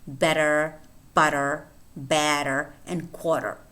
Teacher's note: a single tap tap tap of the tip of the tongue against the alveolar Ridge